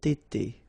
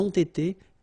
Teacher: You get first the liaison z, and then you get the t.